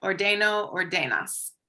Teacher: is it ordeno with the accent on the second to last? Second to last syllable.